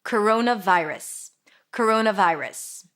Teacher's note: We have a schwa here, if you can hear, vi, I as in my, and then rus. Round your lips for the R, a schwa sound, and an S.